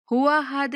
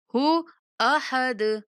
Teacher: ہو کی آواز الگ سے آئے، حمزہ کی آواز الگ سے آئے